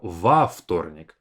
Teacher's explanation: And instead of saying вторник as a long three consonant cluster, we separate it with во вторник, adding a bit of space with a vowel